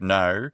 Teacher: The back vowel actually gets fronted and it's but it's rounded. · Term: Australian pronunciation